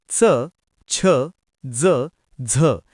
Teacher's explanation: च छ ज झ या वर्णांमध्ये य चा उच्चार मिसळलेला असेल तर त्यांना तालव्य म्हणतात